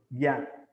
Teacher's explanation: യാ എന്ന് പറയുമ്പോൾ നാവിന്റെ മധ്യമാണ് അണ്ണാക്കി തൊടുന്നത്.